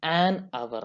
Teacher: ಪದದ ಆರಂಭದಲ್ಲಿ ಕಾನ್ಸನೆಂಟ್ ಇದೆ, ಎಚ್ ಇದೆ, ಆದ್ರೆ ನಾವು ಉಚ್ಚಾರಣೆ ಹೇಗೆ ಮಾಡ್ತೀವಿ? ಆರ್. So ಉಚ್ಚಾರಣೆಯಲ್ಲಿ there is ನೋ consonant, ಹಾಗಾಗಿ ಆನ್ ಅವರ್ ಅಂತ ಹೇಳಿ ಬಳಸ್ತೇವೆ.